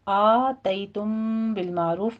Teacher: آ میں فتح قائمہ ہے 2 کاؤنٹ کرنا ہے ، تئی میں یا لین ہے، تم میں میم ساکن کا